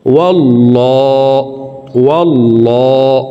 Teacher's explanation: আল্লাহ শব্দের আগের হারফে জবর আছে এই কারণে এই লামকে ল বলে পড়ব অর্থাৎ মোটা করে পড়তে হবে